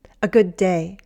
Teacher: Good ends with D, and day starts with D, and we say it as one longer D.